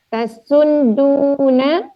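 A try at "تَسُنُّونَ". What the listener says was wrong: Bukan tasudduna, tidak ada dal. Tasunnuna.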